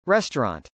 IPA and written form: rˈɛstɚˌɑnt (restaurant)